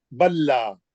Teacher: ہم سیدھا جو ہے با کے زبر کو لے کے مشدد میں چل جائیں گے بلا. اور لا کا مد اصلی ضرور کریں گے، میں آپ لوگوں کو بول رہا ہوں، تھوڑے لوگ ذرا کمزور ہے اس میں. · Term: ادغام متماثلین